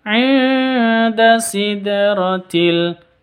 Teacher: dal sukun harus dipantulkan karena qalqalah sugro ada di tengah